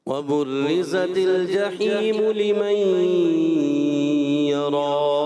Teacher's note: آپ بیٹا جحیم کو زیادہ کھینچ دیتے ہو، مدہ کو زیادہ نہیں کھینچنا. ایک الف اور لمن یرا جہاں پر ادغام کا غنہ ہونا ہے اس کو چھوڑ دیتے، اور آپ کی توجہ میری طرف نہیں ہوتی.